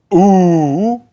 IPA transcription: uː